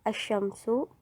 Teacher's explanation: Contohnya, asyamsu, yang mana ketika pelafalannya lam at-ta'rif berubah total menjadi shin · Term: Asimilasi